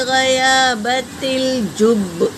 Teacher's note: اور جیم حرکت ہے، با پر تشدید ہے، اور جیم آیا ہے وقف جائز، اگر ہمیں رکنا ہے تو با کو ایک ہی بار پڑھیں گے۔ تشدید کو ہم 2 بار پڑھتے ہیں نا، مگر وقف کی حالت میں اسے ایک ہی بار پڑھیں گے